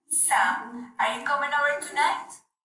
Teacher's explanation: Tonight is the word we need to make an emphasis since it is a question, because if we make emphasis in other word, it is not going to sound good.